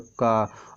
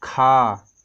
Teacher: तो जब हम का के बाद खा बोलते हैं तो खा में थोड़ा सा हमें मतलब वायु का प्रयोग होता है, लेकिन क्या बोलते हैं, खा को बोलते हैं तो थोड़ा सा खींच के बोला जाता है, इसीलिए इसको क्या कहते हैं, मतलब इसको बोलने में अधिक समय लगता है और इसको बोलने में थोड़ा कम समय लगता है। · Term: महाप्राण